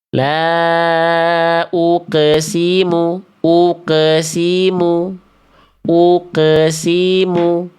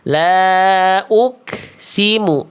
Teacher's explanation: Artinya, kertas itu menjadi tipis, bukan berarti menjadi kaf. Ini sudah menjadi qaf karena tidak ada percikan napas yang dilepaskan.